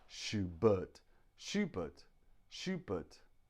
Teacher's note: this is what we call a schwa we make that sound in the throat shoo bird to bird the sound is made in the throat